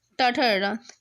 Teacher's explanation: M for मूर्धन, तो मूर्धन्य से बोले जाते हैं, इसलिए क्या है टाठा डडा, ये दंत नहीं है